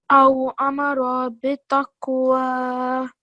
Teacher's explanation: And here as well, what kind of letter is this? Because it's a qaf with a sukoon, so it's a qalqala letter. Okay, so you have to make a jerk there as well.